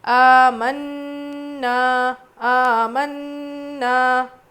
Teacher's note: آمنا، کھڑا زبر ہے، الف مدہ ہے، نون پہ تجدید ہے، غنہ کر کے پڑھیں گے. آ کو جتنا کھینچ رہے نا کو بھی اتنا ہی کھینچیں گے